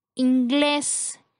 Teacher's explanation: La palabra inglés tiene 2 sílabas. La sílaba con mayor fuerza es la última, termina en S, cumple con la regla, se coloca tilde y es una palabra aguda.